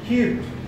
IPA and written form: kyu:t (cute)